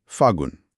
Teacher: आधे ल का लोप हो गया।